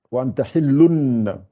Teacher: Alors, si c'est un ba qui vient après, quand j'ai cette situation-là, un tanwin ou un nun sakina, et après j'ai un ba qui vient, je remplace le n qu'on entend dans le lun, le n, je le remplace par un m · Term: iqlab